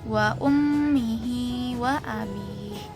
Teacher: Nah, pelafalannya itu sifatnya ini menguat dan dibaca dengan durasi dua harakat pada saat dilafalkan si nun dan mim tasdidnya. Nah, guna ini tuh dari rongga hidung didengungkan dan durasinya tadi dua harakat